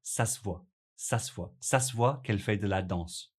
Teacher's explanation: At natural speed that you hear it, the (e in se) sound disappears